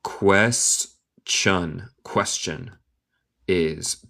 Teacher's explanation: El T suena como CH